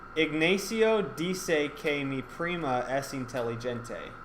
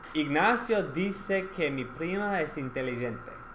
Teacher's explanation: the vowels are more precise and the consonants especially d and g are softer